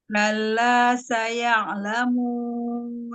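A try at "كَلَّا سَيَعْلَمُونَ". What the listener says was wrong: Ya, jadi langsung ya. Ya-nya fathahnya cepat langsung ke ain ya. Ya'la. Ya. Jadi jangan ya'la. Jangan tamqid.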